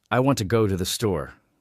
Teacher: When I say it, I stress I, want, go, and store. The words to and the are much softer, almost like background music, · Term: Rhythm